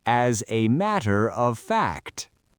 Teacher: It is one continuous slide leading up to a single peak. There are no spaces. There are no breaks. · And then fact is our final content word, so we hit it hard.